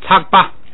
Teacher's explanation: 前边那个降变成平调